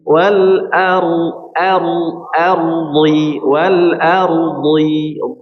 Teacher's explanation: Ro-nya di sini dalam keadaan sukun, maka ro dilihat pada harokat sebelumnya, maka ro di sini tebal artinya.